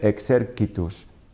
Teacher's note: Fijaos que dicho "excerquitus" no he dicho "excerquitus", esta c en latín clásico siempre se pronuncia como una consonante oclusiva sorda, con independencia de la vocal que tenga a continuación; por tanto no leeremos "excercitus" o "excerchitus", siempre "excerquitus".